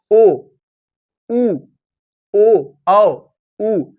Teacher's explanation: इसको बोलने से जो ओष्ठ है वो कैसा बन रहा है? वृत्त के आकार का बन रहा है। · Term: वृत्तमुखी